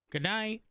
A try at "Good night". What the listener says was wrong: You gotta say it different. The inflection you put on your voice makes it sound like you're saying it a goodbye. It's like goodbye. You're saying good night.